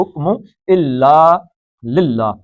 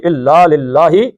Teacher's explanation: اللہ کا لام باریک پڑھنا ہے کیونکہ پیچھے زیر آ گئی